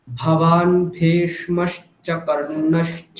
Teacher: দুটো ভকারকে কিন্তু মহাপ্রাণ উচ্চারণ করতে হবে, অল্প প্রাণ বললে হবে না